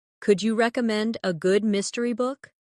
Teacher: Notice how the stress naturally falls on recommend and mystery.